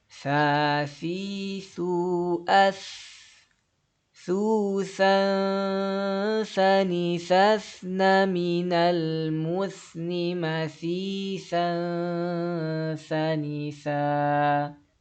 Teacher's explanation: Huruf tha tanwin bertemu dengan huruf tha masih sama ikhfa ya, harus didengung dan juga disamarin.